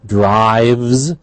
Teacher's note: Drives, however, is a V is voiced. We have a Z at the end.